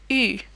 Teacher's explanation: challenging sound because it doesn't have an equivalent in English either it almost sounds like a very rounded EE sound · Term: U sound